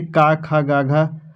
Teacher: कंठ यानी कि क, ख, ग, घ मतलब ये वाला जो क वर्ग होता है क्या होता है? कंठ होता है